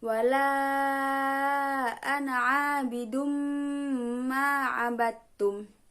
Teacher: terdapat tanwin bertemu dengan mim. Berarti juga harus dibaca idgham biguna. Dan yang pasti disertai dengungan.